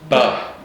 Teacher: both of the lips are involved, not just in the or it's primarily the top one pressing into the bottom.